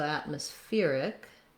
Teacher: the syllable stress changes and we have stress on the fear syllable secondary stress on at and then we add our ick syllable so atmospheric we we